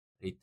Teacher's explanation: retire higher the second syllable is pronounced louder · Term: stress